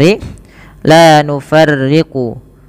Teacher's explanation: la nufarriqu yang rnya itu dibaca dengan tipis